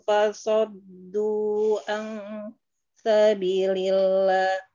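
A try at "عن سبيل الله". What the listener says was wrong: Iya, di sini ansabilillahnya ulang ya dari ansabi panjangin lagi ansabilillah.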